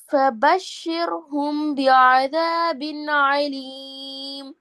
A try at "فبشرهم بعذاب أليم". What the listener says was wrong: அப்ப அதாபின் ஆலிம் ரெண்டுலையும் ஆயின் வந்துக்குது அப்படியா?